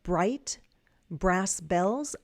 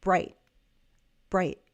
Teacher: When we speak American English and we have T at the end, I could pronounce the T, bright, bright, brass bells. Or what you might hear is that glottle stop because I have a T before a consonant sound. And I'm cutting it off here.